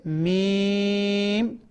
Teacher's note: होंठों के बाहर वाला हिस्से जो है आपस में बुलाकर मीम को पढ़ेंगे।